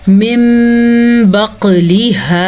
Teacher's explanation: نون ساکن کے بعد با آنے کی وجہ سے نون ساکن کو ہم نے میم میں بدل کے پڑھنا ہے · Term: اقلاب